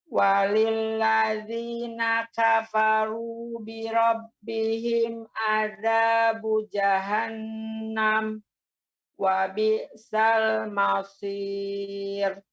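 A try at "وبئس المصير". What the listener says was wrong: Tipis Ibu untuk ra-nya.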